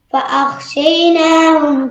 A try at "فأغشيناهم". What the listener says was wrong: فأغشيناهم കേട്ടത് എന്താണ്? فأغشينا غينാണ്.